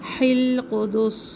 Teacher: سین میں سختی اور سیٹی